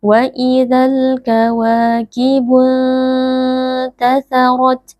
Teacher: Huruf ra, huruf tebal, dibaca dengan mengangkat pangkal lidah. Lalu ketika kita waqaf pada huruf ta sukun, maka perjelas bunyi nafas yang keluar karena huruf ta sukun memiliki sifat hams. · nun sukun disamarkan sambil bersiap-siap mengucapkan huruf ta, lalu dengungnya dipanjangkan. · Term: ikhfa hakiki